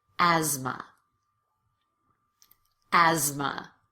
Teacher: Esther. And in this last word, asthma, the TH is actually pronounced as a Z.